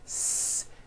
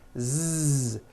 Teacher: So, S has no voicing. S. Z has voicing. Z. So, we say the S sound and the Z sound are also paired consonants.